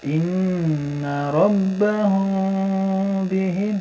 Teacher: Nah ini ada iklab ya, mim mati bertemu dengan ba, jadi harus dengung dan samar